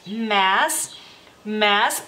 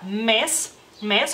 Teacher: el lituano la e esa e es más abierta más larga